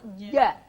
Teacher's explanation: Maka sifat ja saat kita sukun itu adalah sifat syiddah. Maka saat kita mengucapkan ja itu tidak ada udara yang nabrak.